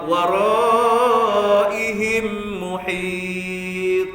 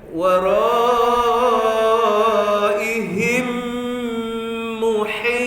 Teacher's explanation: Kena dengungkan. Masuk idghamkan dalam mim, kemudian dengungkan dua harokat.